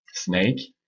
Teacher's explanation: C'est un son évidemment qu'on a aussi en français. Dans snake, le S, c'est un son où la langue se situe avant les incisives. La langue reste vraiment dans la bouche.